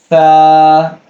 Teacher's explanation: smooth یعنی آواز میں کسی قسم کا جھنجھناہٹ یا سیٹی کا آواز نہیں آئے گا